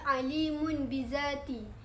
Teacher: Tanwin bertemu dengan huruf ba. Cara membacanya nun mati atau tanwin diubah yang asalnya nun menjadi mim beserta dengung. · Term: iklab